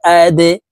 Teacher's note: হামজাহ দাল জবর আদে। দাল কলকলার হরফ, নিচের দিকে ধাবিত করে ধাক্কা দিয়ে উচ্চারণ করব।